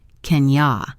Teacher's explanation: can you often gets reduced to kenya